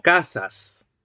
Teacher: La segunda sílaba estaría constituida por el fricativo alveolar sordo, seguido de la vocal A, el núcleo de la sílaba, más otro fricativo alveolar sordo al final de la palabra. ¿Sí? Entonces, ese fricativo alveolar sordo que está al final de la palabra y al final de la sílaba va a ocupar una posición implosiva o posnuclear.